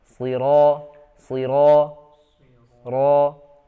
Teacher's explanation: huruf ro ini huruf tebal ya, tapi bukan itbaq ya. Jadi suaranya hanya diarahkan ke atas seperti ko, ro, siro, siro.